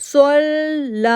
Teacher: اب صاد جو ہے وہ موٹا لیٹر ہے، حروف مستعلیہ میں سے ہے، صاد کو لام کے ساتھ جوڑا، تشدید کے لیے 1 سیکنڈ کے لیے ہم رکے، دین لا کو 2 سیکنڈ کے لیے ہم نے کھینچا.